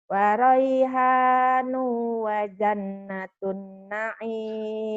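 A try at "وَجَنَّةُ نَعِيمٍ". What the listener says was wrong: Kenapa aja ditun kan yo? Kan nggak ada tanwinnya. Wa raihanu wa jannatu na'im. Wa raihanu wa jannatu na'im. Wa jannatu na'im. Wa jannatu na'im.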